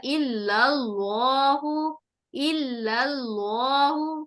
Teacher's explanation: یہ جو لام ہے اس کے اوپر زبر آنے کی وجہ سے یہ لام جلالہ جو ہے موٹا ہو جائے گا